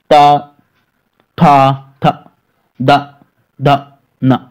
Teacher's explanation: जब आप ता बोलेंगे तो जो जीभ है दोस्तों ऊपर वाले दांत में लगी, ता लगी दोस्तों।